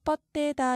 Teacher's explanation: 받침 디귿 뒤에 이어지는 디귿을 된소리로 바꾸어서 뻗대다 이렇게 말합니다.